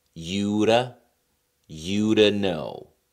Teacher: 首 先 to 里 面 的 音 被 弱 化 成 了 t。 其 次 字 母 t 因 为 是 在 2 个 元 音 之 间 出 现 啊， 所 以 也 可 以 用 flap t 的 方 式 来 处 理。